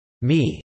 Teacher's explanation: in parts of Scotland and North-West England, 'my' will be pronounced as 'me'